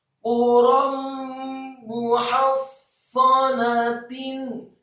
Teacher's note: ra yang fathah tanwin bertemu dengan huruf mim, maka hukum bacaannya adalah idgham bil gunnah, memasukkan dengan dengu. Quram muhassanatin, kata muhassanatin mimnya dibaca marfu' atau dhammah satu harokat, kemudian haknya dibaca tipis fathah satu harokat, kemudian huruf sadanya ditasydidkan.